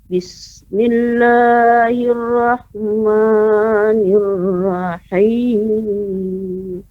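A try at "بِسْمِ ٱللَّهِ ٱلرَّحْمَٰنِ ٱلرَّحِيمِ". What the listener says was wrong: Ya, pengucapan bismillah Ibu ya cukup diayunkan agar tidak berlebihan panjangnya. Bismillahirrahmanirrahim.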